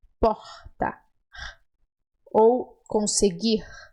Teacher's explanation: costuma fazer o r final das palavras com uma expiração